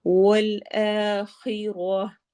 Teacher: خا موٹے حروف میں سے ہے اور حروف حلقی میں سے بھی ہے، یعنی حلق سے ادا ہوگا اور موٹا بھی پڑھا جائے گا